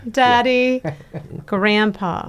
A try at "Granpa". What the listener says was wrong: Grandpa. No, not D. No D. Grandpa.